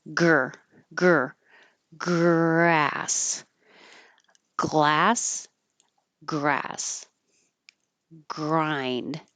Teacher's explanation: And the same for the R. I can have my tongue curled back for the R, At the same time, the back is going up for the G.